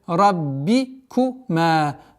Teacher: Четкое произношение касры. Ра твердая. Раббикума. Долгота в размере 2 огласовок фатха.